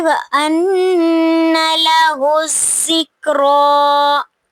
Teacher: لَهُ الذِّكْرَىٰ پہ جب ہم وقف کریں گے تو یا جو ہے وہ حروف ساکتہ میں سے ہے، یہ لکھا جائے گا لیکن پڑھا نہیں جائے گا، کھڑی زبر کو ہم پڑھیں گے